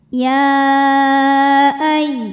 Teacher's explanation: Cara membacanya sama seperti mad jaiz munfasil hakiki, dipanjangkan 4 atau 5 harokat. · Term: mad jaiz munfasil hukmi